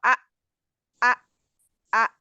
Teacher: जब हमजा के ऊपर जजम लगाएंगे तो आ आ आ आवाज बिल्कुल रुक गई